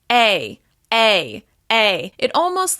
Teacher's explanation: my mouth is moving into the Y shape when I pronounce this vowel sound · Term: off glides